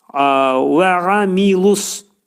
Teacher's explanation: ayn hərfi boğazın ortasından çıxarılır